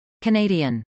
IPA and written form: kənˈeɪdiən (canadian)